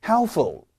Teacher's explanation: 중요한 거는 P 소리가 묵음이다. helpful이 아니고 helpful 이렇게 발음을 해주셔야 됩니다.